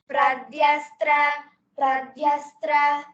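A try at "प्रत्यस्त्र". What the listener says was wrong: Not Pradyastra, it is ta. Pratyastra.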